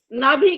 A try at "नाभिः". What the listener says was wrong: हाँ वो आवाज नहीं आई पूरी, नाभि ऐसे आवाज आती है तब पता लगता है, नाभि बोलेंगे तो नहीं आएगी। अब ठीक है, अब सुनाई दिया पूरा।